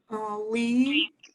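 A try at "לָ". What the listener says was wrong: No, the vowel is ah.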